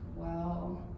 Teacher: It's the low dip, third tone in Chinese.